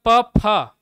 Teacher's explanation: तो मेरे होठ जुड़ते हैं